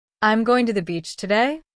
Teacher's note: at the end of every sentence, his voice rose as if he were asking a question. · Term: rising tone